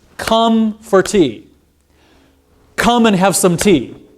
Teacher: I'm emphasizing those stressed syllables and I'm just cramming every other syllable into there · when there's only one unstressed syllable it's relatively long but if there's a lot of unstressed syllables you cram them into the same amount of time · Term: stress time to language